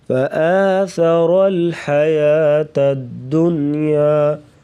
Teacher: دنیا پہ غنہ نہیں کریں گے۔